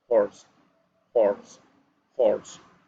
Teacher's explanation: Here we have the consonant H. The consonant H is an unvoiced sound because we don't have to make too much effort. We don't have to make effort in our lungs to produce the sound.